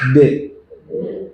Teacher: nah ketika bunyi de jangan pakai Hamzah di akhir De jangan ditekan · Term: qqolah